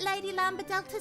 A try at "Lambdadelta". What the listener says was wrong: Do you really not pronounce the D? Because it looks like it would be Lambda Delta. Well, yeah, because it's Lamb and then D-A.